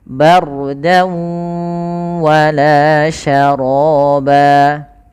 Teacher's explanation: Setelahnya dimaksudkan adalah hukum tajwidnya, yaitu idgham bi gunnah. Idgham bi gunnah yaitu kita memasukkan suara tanwin kepada huruf setelahnya, yaitu huruf waw. Maka langkahnya yang pertama masuk, kemudian menahan gunnah.